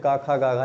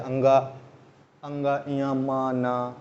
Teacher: हल्का सा नाक और मुंह दोनों का सहारा लेना पड़ता है, हल्का सा झन्नाहट आती है। कभी कह के देख लीजिए, अंगा ढ इया नहीं, जैसे अंगा अंगा इया मा ना, जब इनको बोलते हैं तो हल्का एक आपको झंझनाहट फील होगी, नाक से भी कुछ निकलता है स्वर। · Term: अनुनासिक